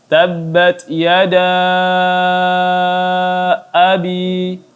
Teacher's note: mad jaiz munfasil, maka dibaca 4 harakat, 5 atau 6 harakat, dibaca lebih panjang